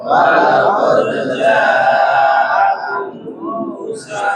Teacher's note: Jangan sampai ditahan suaranya atau walaqad itu tidak mantul, harus dipantulkan.